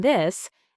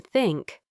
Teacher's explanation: The th sound, both with voice like in this and without voice like in think.